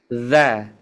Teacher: seperti kita membaca Z itu ada getaran di ujung lidah ke ujung gigi seri ini · membacanya itu dari ujung lidah ke ujung gigi seri atas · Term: huruf dzal